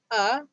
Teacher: Hamzah berbaris atas bunyi dia a. A bunyinya keluar daripada pangkal halqum.